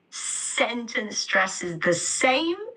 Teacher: I'm stressing sentence and same in the sentence